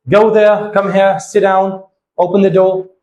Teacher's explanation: So these all commands and all instruction, your tone and your intonation will go fall at the end. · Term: falling intonation